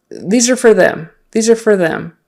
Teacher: fast conversation it sometimes turns into fur